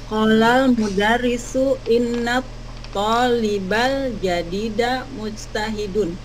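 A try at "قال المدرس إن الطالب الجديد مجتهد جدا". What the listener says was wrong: Jidan. Ah, jidannya jangan ditinggal, ya. Qolal mudarrisu inna talibal jadida mujtahidun jidan.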